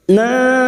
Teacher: Nun yang bertasdid gunna musyaddadah kita dengungkan selama 3 harokat.